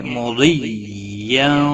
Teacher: ضاد حروف مستعلیہ میں سے ہے، پر پڑا جائے گا۔